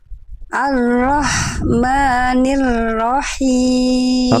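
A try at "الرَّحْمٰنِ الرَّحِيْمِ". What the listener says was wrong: Oke, sekali lagi rnya dikuatkan lagi sedikit getaranya.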